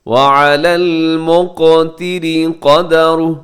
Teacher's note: مقتری را باریک ہے کیونکہ را کے نیچے زیر ہے